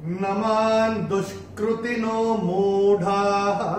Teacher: पहले चरण में मां के ऊपर अनुस्वार के बाद का जो अक्षर है वो है द, और अनुस्वार के बाद जब द आएगा तो अनुस्वार का उच्चारण होगा न